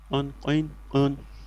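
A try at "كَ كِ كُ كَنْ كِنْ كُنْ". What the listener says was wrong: কন কিন কেন কিন বলে তো নরমাল হয়ে গেল কন কিন কুন হ্যাঁ আরেকটু গভীর করেন কন কিন কুন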